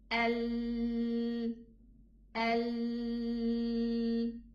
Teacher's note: The makhraj is the tongue, this round part against the upper teeth, the parallel teeth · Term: lam